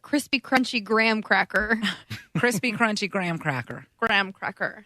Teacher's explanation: she uses the back of the tongue to say the CR sound and the gr sounds instead of the front of her tongue